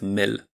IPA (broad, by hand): mɘl